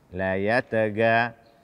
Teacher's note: Kemudian mengganti ghain dengan g.